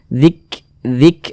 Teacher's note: Jadi ada nafas yang mengalir tapi seperti memercik, karena huruf kaf itu merupakan huruf yang memiliki sifat hamas.